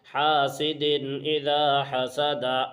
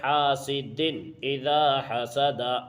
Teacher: حاسد اذا حسد، حا الف زبر حا، سین زیر سی، حاسی، دال دو زیر دن، حاسد، حمزہ زیر ای، ذال الف زبر ذا، اذا، حا زبر حا، سین زبر سا، حسا، دال زبر دا، حسدا، حاسد اذا حسد۔ دیکھو دال کے نیچے دو زیر کی تنوین ہے اور تنوین کے بعد حروف حلقی میں سے الف کی شکل میں حمزہ آیا ہے، اس لیے یہاں بھی اظہار ہوگا، یعنی اس کو بھی بغیر غنہ کے ظاہر کر کے جلد پڑھیں گے